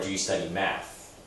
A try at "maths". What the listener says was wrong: There's an S at the end, maths.